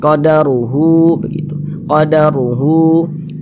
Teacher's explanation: Hu dibaca panjang, mad silah qasirah. Panjangnya 2 harokat.